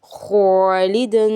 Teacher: ये अलिफ से पहले बारीक हरफ है, अलिफ बारीक पढ़ेंगे